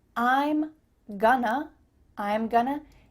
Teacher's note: we have a contraction i am and then we're reducing going to to become gonna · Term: reductions